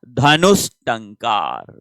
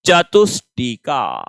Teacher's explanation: जो ट वर्ग होता है वो मूर्धन्य होता है और ये जो स है ये भी मूर्धन्य है, तो इसलिए विसर्ग किस में बदल रहा है, मूर्धन्य स में बदल रहा है, ये ध्यान रखें।